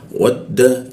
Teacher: Nah, huruf wa masuk ke dal ya. Wad dal gigi bertemu ujung lidah.